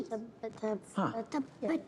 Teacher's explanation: Bila dia mati huruf ta ni mati sukun tabbat ada keluar angin hamas dekat situ